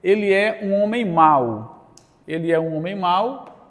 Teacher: hoje este L tem um som de U, então ele é uma semivogal.